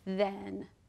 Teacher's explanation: th in the word then is voiced then because you can feel your voice vibrate when you say